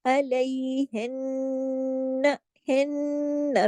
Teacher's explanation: क्योंकि नून मुशद्दद है, जब भी नून मुशद्दद होता है तो गुन्ना होता है अकमल, बड़ा गुन्ना होगा।